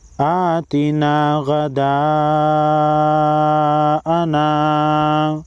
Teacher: بڑی مد کو 5 الف کے مقدار کھینچ کر پڑھیں گے۔